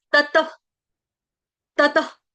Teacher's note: तत के आगे जो विसर्ग है उसका उच्चारण हलंत फ की तरह लगना चाहिए।